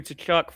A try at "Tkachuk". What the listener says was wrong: It's not. It's Kachuk. You don't say the T.